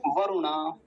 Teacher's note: वरुणा लंबा नहीं खींचें क्योंकि छोटा उ है